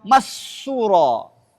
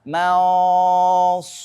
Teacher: Nunnya tetap terbaca tapi tidak jelas seperti izhar dan tidak hilang seperti idgham. Maka dia samar bunyinya. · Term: ikhfa